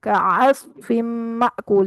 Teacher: यहाँ पर स्वाद जो है वो पुर है, आइन जो है वो वस्ते हल्क से है।